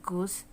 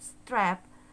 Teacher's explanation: when the speaker produce the sound u, we relatively heard this sound longer than when the speaker say the word strap. He produced the vowel sound a, and we relatively heard this sound shorter.